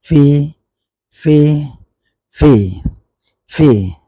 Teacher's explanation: অর্থাৎ উপরের দাঁতটা নিচের ঠোঁটের সাথে লাগাইতে হবে।